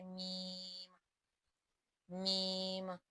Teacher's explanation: میم بھی حروف شفویہ میں شامل ہے، یعنی ہونٹوں سے ادا ہوگا، جیسے میم، میم۔